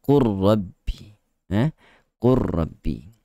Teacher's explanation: Kalau yang mengatakan dia sebagai mutaqaribain, lam dan ra ini berada pada makhraj yang berhampiran, bersebelahan. Lam dan ra bukan tempat lidah yang kita angkat tu lidah yang sama. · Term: idgham mutaqaribain